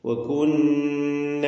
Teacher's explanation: നൂൻ മുഷദ്ദ ശബ്ദ നൽകപ്പെട്ട നൂൻ വന്നിട്ടുണ്ട് മണിച്ചുകൊണ്ട് നൂനിനെ ഉച്ചരിക്കണം രണ്ട് ഹറക്കത്തിന്റെ അളവിൽ അതിന് ഉന്നത്ത് കൊടുക്കുക